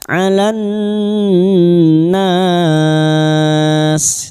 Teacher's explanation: lam ta'rif yang bertemu nun idgham syamsiyah, nun kita dengungkan selama 3 harokat